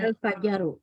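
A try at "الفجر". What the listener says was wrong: Iya, Fajaru ya, bukan Fajaru. Fajaru. Jimnya sukun.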